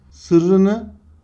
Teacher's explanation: Bakın ikinci R'nin türediğini görüyoruz. Buna ünsüz türemesi denir.